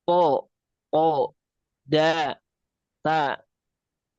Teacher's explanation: th dal dan ta ini dia keluar dari ujung lidah